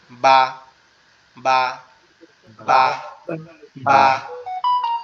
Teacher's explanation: আমাদের দুই ঠোঁট একসাথে লাগবে, এরকম ভাবে লেগে পৃথক হয়ে যাবে।